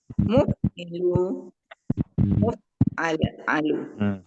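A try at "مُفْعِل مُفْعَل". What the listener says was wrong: Lu lali jangan bunyi. Muf'il, muf'al. Muf'il, muf'al.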